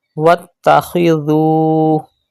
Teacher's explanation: Pronounce dhal without whistle sound and stretch waw madda after dhal.